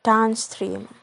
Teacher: Now the primary stress is placed on the second word and the secondary stress on the first word, like in the word downstream. The stream is primary stress and down is secondary stress.